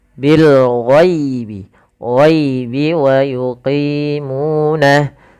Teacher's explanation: kita jelaskan suara lamnya, dan ini kita namakan dengan alif lam qamariyah karena bertemu dengan huruf ghain